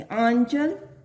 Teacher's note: तो इसका उच्चारण नासिका द्वारा होना चाहिए।